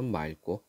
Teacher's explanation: 리을 기억 받침 뒤에 기억이 오면은 리을로 발음합니다